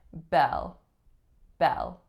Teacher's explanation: Even though they look the exact same, this one is one syllable, the vowel is and it goes right into a dark L, using the back of your tongue.